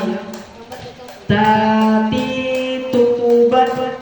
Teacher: posisi ujung lidah kita berada pada gigi seri bagian atas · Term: huruf ta